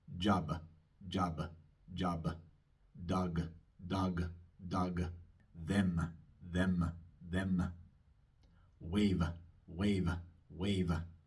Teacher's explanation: Ven que cuando pronuncio un sonido sonoro al final de una palabra, sigue una pequeña A muy cortita, casi imperceptible.